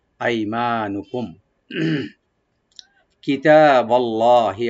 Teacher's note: কুম মিম সাকিন এখানে আমরা এজাহার করবো, এখানে গুণা হবে না